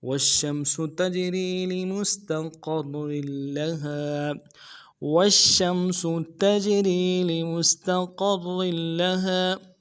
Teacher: والشمس میں واو کو شین کے ساتھ ملانا ہے، شین میں حروف تفشی واضح کرنا ہے، شین کے اوپر تشدید ہے زور دیں گے اور شین کو آگے میم کے ساتھ ملانا ہے.